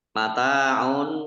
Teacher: ta fathah Alif Mad thii panjang dua harakat dah tanwin bertemu dengan huruf Q bacaan Ikhfa dibaca samar-samar mataun